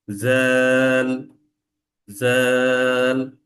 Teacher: এই জিভের আপনার হচ্ছে দাঁতের গোড়ার সাথে লেগে একটু চাপ দিতে হবে, ঝটকা বাতাস যেটা বলি আমরা সেটা বের হবে।